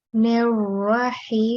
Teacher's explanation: So this is a thick ra, so you need to round it.